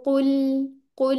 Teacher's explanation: कॉफ पे गोल और लाम पे अनरोल, तो फिर ठीक आवाज होती है। वरना अगर आप रोल ही रहने देंगे तो वैसी आवाज आएगी, कुल, कुल, तो ये तो ठीक आवाज नहीं है, ठीक है।